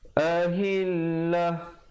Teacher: kalau sahabat-sahabat pilih untuk waqaf ta marbutah, bila kita berhenti dia betulkan menjadi ha